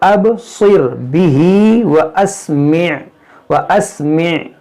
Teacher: अब सिर बा में कलकला होगा, स्वाद को मोटा पढ़ेंगे